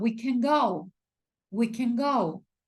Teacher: No enfatizamos el modal verb can. ¿Por qué? Porque está en afirmativo.